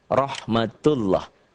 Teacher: Saya nggak hafal, ini namanya dhammah. Dibaca tebal berbunyi O, Allah, karena sebelumnya berbaris di atas atau dhammah. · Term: tafkhim